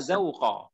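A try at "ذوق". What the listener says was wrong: Za, bukan zai ya, za.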